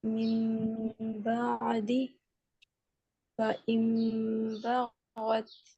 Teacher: نون ساکن کے بعد با آ جائے تو ہم نون کی آواز کو میم میں بدل دیتے ہیں